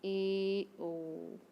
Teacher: अर्धसंवृत स्वर के उच्चारण में मुख द्वार कम सकरा होता है